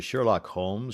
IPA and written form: ˈʃɜːrlɒk ˈhoʊmz (Sherlock Holmes)